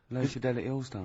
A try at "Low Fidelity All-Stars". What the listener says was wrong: No, it's just you didn't open your mouth wide enough.